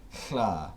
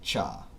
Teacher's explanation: Voiceless alveolar lateral fricative to ejective postalveolar sibilant affricate.